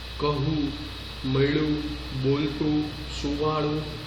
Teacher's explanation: અનુસ્વાર છે પણ તીવ્ર રીતે દર્શાવવાની જરૂર રહેતી નથી